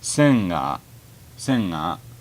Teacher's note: sometimes Japanese speakers will pronounce the G as actually an NG sound, so it'd be nga instead of ga.